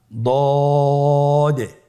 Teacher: জিহ্বার গোড়ার কিনারা সামনের উপরের দুই দাঁতের গোড়ার সঙ্গে লাগিয়ে উচ্চারিত হয়